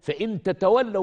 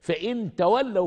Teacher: حذف تاء منهم تخفيفا في النطق